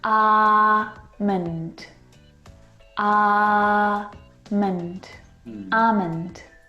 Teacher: Now, in this word, the L is silent.